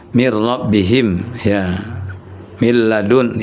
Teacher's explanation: Jadi bunyi nun sukun itu digabung ke lam tapi dia bila ghunah tidak diiringi dengan dengung